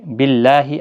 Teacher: اللہ کا لام یہاں پر باریک پڑھا جائے گا زیر کی وجہ سے